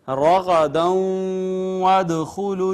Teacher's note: ناظرین یہاں پہ دیکھیں واو کے اوپر شد ہے اور واو حروف ادغام میں سے ہے. ما قبل ہم نے دیکھا تو نون تنوین تھی, یہ ادغام بالغنہ ہو گیا